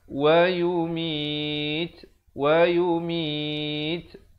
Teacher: ada hamasnya, bunyi angin di situ. Dengan sekurang-kurangnya 2 harakat.